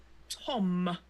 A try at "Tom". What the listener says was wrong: You're saying it wrong. I don't know why you're saying it like that. It's Tom. Like Tom. Like Tom. Not Tom. You're saying like it's got a B on it. Like tomb. No. Tom. Tom.